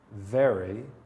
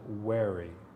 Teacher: W has two points at the bottom and those points represent the lips. Two lips coming forward with no friction.